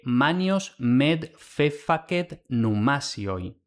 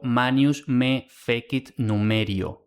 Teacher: evolucionó a la vibrante simple R por el fenómeno denominado rotacismo, o sea, la s entre vocales pasa a R